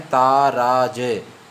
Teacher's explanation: और तगण का जो समूह है दोस्तों, तगण का जो समूह है वो कैसा है, ता रा ज, मतलब अंत लघु होता है दोस्तों। ये ता में दीर्घ है और रा में भी दीर्घ है और अंत में ह्रस्व है